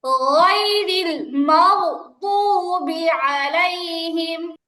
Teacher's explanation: এখানে বাংলা ক এর গ আসবে না, গয়রি হবে, সফট করে উচ্চারণ হবে।